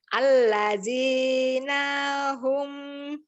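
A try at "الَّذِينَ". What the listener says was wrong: Ibu belum keluar lidahnya jadi tepat seperti Huruf Zain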